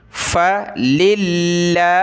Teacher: فللہ فا زبر فا کے بعد ہے للہ، ٹھیک ہے؟ تو لفظ اللہ کو باریک کریں گے